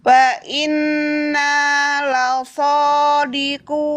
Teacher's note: Wa inna la sadiquna. La tipis, sodanya yang tebal.